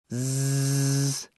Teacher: Zed is a voiced alvea fricative